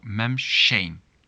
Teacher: And the sh at the end disappears because this is one of those words, nothing, that is already negative.